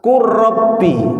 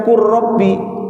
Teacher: Qul ini lamnya sukun, kemudian ketemu ra. Menjadi apa? Qurrabbi, lamnya hilang.